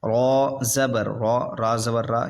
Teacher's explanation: را موٹا پڑھیں گے کیونکہ را پہ زبر ہے